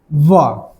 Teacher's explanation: व का जब उच्चारण करते हैं तो दंत और ओष्ठ दोनों का स्पर्श हो रहा है, ठीक है, तो व को क्या बोलेंगे, दंतोष्ठ, ठीक है।